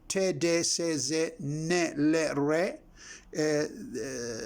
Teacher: Here we have te and se are voiceless. De, ze, ne, le, re are voiced. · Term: alveolar